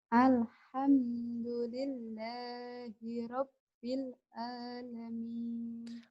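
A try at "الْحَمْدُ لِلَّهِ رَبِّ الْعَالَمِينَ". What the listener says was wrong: ainnya ya. Suaranya agak mendem ke dalam artikulasinya. Alhamdulillahi rabbil ain. Alhamdulillahi rabbil ain. Alamin.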